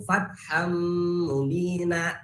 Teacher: Fatham, nah itu idgham masuk. Tanwin ini masuk ke mim, fatham, akan tetapi harus memakai guna. Fatham 2 harakat membacanya itu. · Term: idgham bigunah